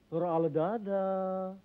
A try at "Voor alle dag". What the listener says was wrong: Bukan dada, goblok. Voor alle dag.